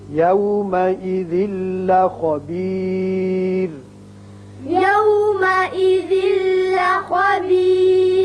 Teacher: یہاں تنوین کے بعد لام ہے ادغام بغیر غنہ ہوگا